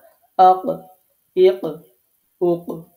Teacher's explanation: এটা কলকলার হরফ, এজন্য আমি ধাক্কা দিয়ে উচ্চারণ করছি